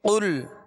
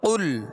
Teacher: مخارج کی تفصیلات: قاف لام پیش قل، قاف پر پڑھیں گے اس لیے کہ یہ حروف مستعلیہ میں سے ہے، اور لام کا جو سکون ہے، جزم ہے، اس میں جنبش پیدا نہ ہو۔